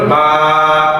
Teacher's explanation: এই বাতে উচ্চারণ করার সময় এক আলিফে পড়তে হবে লম্বা করে পড়তে হবে